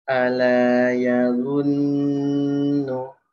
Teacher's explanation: Nah, habis itu huruf nun ya, dia dengungnya tipis.